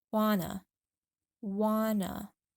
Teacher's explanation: We link the two words together and drop the T completely so it sounds just like wanna, wanna. Try it out.